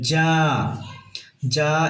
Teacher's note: যা এখানে চার আলিফ মদ চার আলিফ টেনে পড়তে হবে